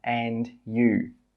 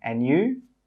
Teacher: And note here with the you, it's a rising intonation.